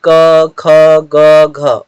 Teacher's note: क वर्ग जो है उसका उच्चारण कंठ से होता है। जैसे क ख ग घ उच्चारण आप करके देखिएगा तो यहाँ कंठ से इनका उच्चारण हो रहा है।